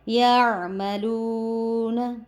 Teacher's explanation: یہ واو مدہ تھا اس وجہ سے ہم نے اس کو کھینچ کے پڑھا